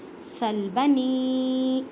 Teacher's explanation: یا مدہ کا قاعدہ، چھوٹی مد 4 الف کی مقدار میں کھینچ کر پڑھیں